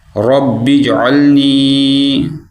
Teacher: جیم پہ ہم قلقلہ کریں گے